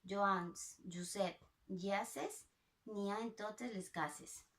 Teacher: En la paraula Josep, la E és una vocal oberta i després hi ha una sonorització de la consonant S, la S sonora, en les paraules ases, cases i Josep. I per últim, també hi ha una sinalefa.